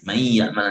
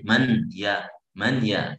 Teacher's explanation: Karena idgham lebih mudah ketika nun bertemu ya itu, jadi lebih mudah idgham daripada dibaca dengan izhar, karena idgham itu satu kali. Man ya'man langsung ke ya. Nunnya udah nggak ada ya. Kalau izhar 2 kali, man ya gitu.